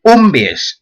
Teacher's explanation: siempre con el acento recayendo na raíz